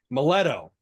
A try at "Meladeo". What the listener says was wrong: You're missing a vowel there. Meladeo. Meladeo.